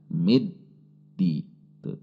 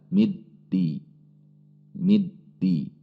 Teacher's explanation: Selanjutnya mim kasrah mi, masuk ke alif lam samsiyah huruf dal, sehingga langsung masuk ke huruf dal. Sifat huruf dal adalah syiddah, sehingga ketika tasydid seperti tertahan sejenak